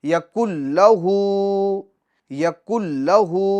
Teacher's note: یہ الٹا پیش اس کو بھی ہم ایک الف کی مقدار کھینچیں گے، یعنی 2 حرکت کے برابر ہم کھینچیں گے۔ یکن لہ، یکن لہ، اس کو ایک الف کی مقدار کھینچیں گے، یکن لہ، ہو یہ سمجھو آپ نے کھینچا نہیں، یکن لہ، لہ بلکہ لہ ایک الف کی مقدار کھینچیں گے کیونکہ الٹا پیش ہے، اور الٹا پیش یہ واو مدہ کے قائم مقام ہے۔